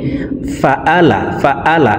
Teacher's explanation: আইন হরফকে হলকের মধ্যখান থেকে উচ্চারণ করব। আমরা অনেকেই ফাআলা ফাআলা এইভাবে পড়ে থাকি।